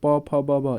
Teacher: प फ ब भ ये ओष्ठ से